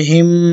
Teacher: এখানে গুণনা করতে হবে কারণ এখানে মিমে তাসদীদ আছে